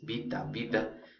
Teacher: la sonorización en castellano de las consonantes oclusivas, sordas, latinas, intervocálicas